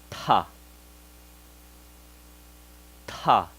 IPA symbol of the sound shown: th